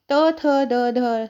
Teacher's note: जीभ की जो नोक होती है ऊपरी दांतों का स्पर्श करती है, वो दंत व्यंजन कहलाते हैं।